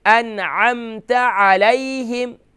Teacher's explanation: انعمت یہاں پر ہم غنہ نہیں کر کے پڑھیں گے بلکہ نون کو ظاہر کر کے پڑھیں گے